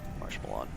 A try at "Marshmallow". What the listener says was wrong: Put the emphasis on a weird spot there. I would have said Marshmallow. Marshmallow. Yeah, I mean, I would say Marshmallow if I'm being honest, but because like just say the way you said it though, Marshmallow. That doesn't sound right.